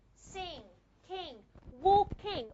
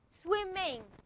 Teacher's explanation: This is the ing sound. How do we pronounce it? We use the nasal cavity. Okay? How do I know that I'm using the nasal cavity?